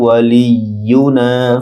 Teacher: ওয়ালি লাম ইয়ার সাথে শক্তভাবে উচ্চারণ হবে, ইউনা না এক আলিফ লম্বা হবে